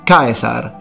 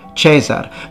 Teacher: the fully pronounced diphthong instead of the simplified e that we find in ecclesiastical latin we know it's kaisar not chesar because we again have many